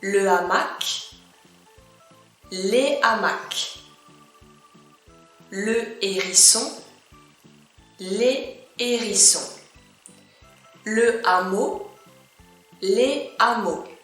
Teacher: as you can hear at the plural form, I do not make any liaison, any connection.